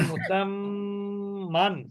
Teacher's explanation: মিমের উপরে তাজদিদ, গুণনা করা ওয়াজিব